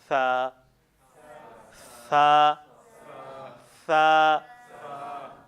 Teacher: زبان کی نوک، یہ زبان کی نوک ہے جی۔ ثنایا علیہ کے کہاں سے لگے؟ اوپر والے دونوں دانتوں کے کنارے سے لگے